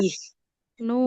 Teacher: Haknya di tengah tenggorokan.